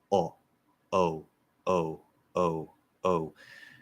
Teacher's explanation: instead of letting the lips just come out statically, you round the lips around, which American English does.